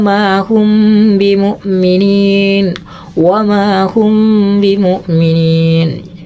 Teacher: ikhfa artinya samar Safawi di bibir ya jadi samarnya di bibir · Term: Ikhfa Syafawi, ikhfa safawi